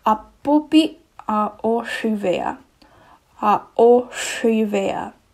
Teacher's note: So it kind of sounds like an SH sound, but it has a slight whistling to it. And that's because the sha R means it's a retroflex. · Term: retroflex S